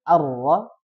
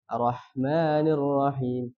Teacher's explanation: yang pertama menghilangkan tasdid di huruf ro yang harusnya dibaca arra dia langsung arrahmanirrahim ya Jadi harus ada